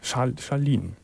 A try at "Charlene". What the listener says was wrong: Charlene. Nicht mit diesem L in der Mitte. Ja.